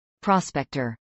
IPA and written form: ˈpɹɔːsˌpɛktɚ (prospector)